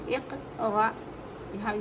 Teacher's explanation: हमज़ा साकिना के पढ़ने में झटका होता है।